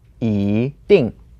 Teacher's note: The 一 word changes to the second tone because it's paired with 定, which is the fourth tone.